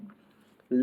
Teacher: जब हम ला का उच्चारण करते हैं तो जीभ हमारी ऊपर की ओर उठ जाती है, और दोनों से यानी दोनों तरफ यानी अगल और बगल से हमारे मुख के द्वारा हवा निकलती है, तो इसीलिए पार्श्विक व्यंजन कहते हैं।